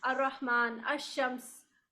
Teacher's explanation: الرحمن بولنے میں ہم لام نہیں بولتے